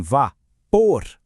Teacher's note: em vá, por, a força está lá no fim